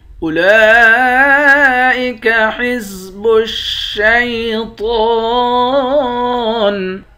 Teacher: لام کے اوپر کھڑا زبر ہے، کھڑے زبر کے اوپر مد ہے، اس مد کو 5 الف کے برابر کھینچتے ہیں. تو کو موٹا پڑھیں گے، تو کو ایک الف کے برابر کھینچ کر بھی پڑھیں گے، یہاں پر کھڑا زبر ہے، آخر میں نون ساکن ہے.